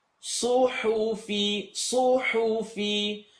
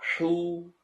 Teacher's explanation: sad is heavy, ha is light? Even though both of them have an u sound, both of them have an u.